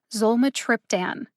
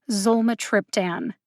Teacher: the syllables with the emphasis are zol and trip zolma triptan zole has the secondary emphasis and trip has the primary emphasis that means that i put more emphasis on the syllable trip